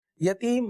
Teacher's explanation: یتیم مد عارض کا قاعدہ ہے، 3 الف تک کھینچ کے پڑھیں گے